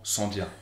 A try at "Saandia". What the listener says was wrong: On dit Saandia. Saandia. Les deux A se prononcent.